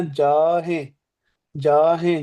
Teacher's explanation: ਨੱਕ ਚੋ ਆਵਾਜ ਕੱਢਣੀ ਹ